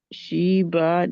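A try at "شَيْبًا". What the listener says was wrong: बा नहीं करना, बा को लंबा नहीं खींचना जब आप नून कुतनी पढ़ेंगे आगे तो।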